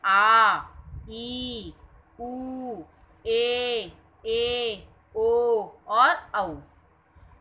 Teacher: इनके उच्चारण में ह्रस्व स्वर के उच्चारण से दुगना समय लगता है, यानी कि डबल टाइम लगता है। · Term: दीर्घ स्वर